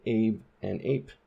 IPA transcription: eɪb ĕɪp